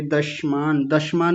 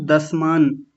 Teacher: आपने इसको तालव्य शकार बना दिया था